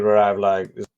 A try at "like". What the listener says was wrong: I do think your placement could go a little lower on the I sound.